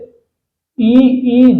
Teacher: चलो, तो जो ऊपर में टकराए तो वो क्या कहलाता है, तालबी, तालबे वाले। जैसे ई जीभ के तालु के पास जाने से उच्चारित होते हैं